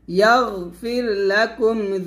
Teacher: এখানে গয়নটা কলকলা করা যাবে না, তবে গয়ন মোটা করবেন